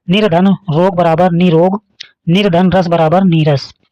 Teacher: अगला नियम है यदि र वर्ण से आगे र दिया हो तो पहले र का उच्चारण पूर्णतः अदृश्य हो जाता है और स्वर का उच्चारण दीर्घ हो जाता है